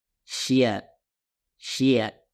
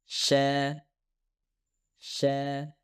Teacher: Shin dihasilkan oleh gesekan udara yang melewati ruang kecil yang terbentuk di antara langit-langit keras dan bagian tengah lidah. Sha, sha. Inilah 3 suara yang dihasilkan dari bagian tengah lidah.